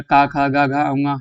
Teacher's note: ये कंठ से उच्चार